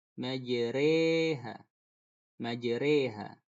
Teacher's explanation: Dia beda pengucapannya dari huruf yang asli. Berikutnya alif mumalah, yaitu alif yang dibaca condong huruf E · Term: imalah kubro